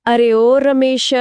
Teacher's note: या फिर अ गांव देहात में जब किसी को बहुत दूर से आवाज लगानी होती है जैसे कोई पुकारे अरे ओ रमेश तो नाम के आखिर में जो ध्वनि बिना रुके खींचती चली जाती है वही असल में प्लुत स्वर है।